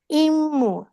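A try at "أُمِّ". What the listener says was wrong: ই উচ্চারণ কোত্থেকে আসতেছে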